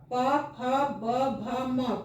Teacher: जैसे स्पर्श व्यंजन में पूरा पूरा छूता है, प फ ब भ म पूरा होठ छू रहा है।